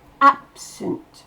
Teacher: Ensuite, on fait la liaison avec absent. Dans absent, c'est ab qui explose. Le sunt, on l'entend quasiment pas.